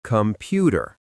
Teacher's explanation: Look at the word computer. The O is at the beginning, but we don't stress it, so it becomes computer. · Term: schwa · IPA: /ə/